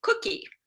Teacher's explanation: the velar consonants where the tongue has to bunch up toward the soft palate to make the k sound